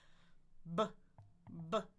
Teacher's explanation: Two lips exploding and vibration.